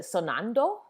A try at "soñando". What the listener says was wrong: I forgot to put the little curly Q on the end, so it's soñando or dreaming. Soñando.